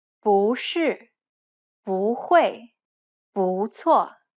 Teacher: if the next tone is also a falling tone, it will change to a rising tone.